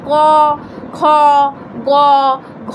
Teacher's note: এই ধ্বনিগুলো উচ্চারণের সময় বাতাস জিহ্বামূল বা কণ্ঠে ধাক্কা খায়। আমরা যখন উচ্চারণ করছি তখন বাতাসটা কিন্তু আমাদের কণ্ঠে ধাক্কা খাচ্ছে, তাই এইগুলোকে আমরা ব্যঞ্জনধ্বনি বলে থাকি।